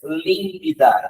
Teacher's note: Límpida é a terceira de trás para frente. Então, ela é uma proparoxítona